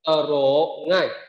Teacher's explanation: âm trở chúng ta không đọc là trở mà chúng ta đọc là tờ rơ